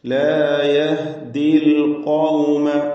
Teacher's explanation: യഹ്ദി എന്നതിലെ ദീർഘാക്ഷരമായ യാ ഇൽതിഖാഉ സാക്കിനൈൻ പരിഹരിക്കുവാൻ വേണ്ടി ഒഴിവാക്കുകയാണ് ഉച്ചാരണത്തിൽ നിന്ന്, ചേർത്ത് വായനയിൽ നിന്ന്.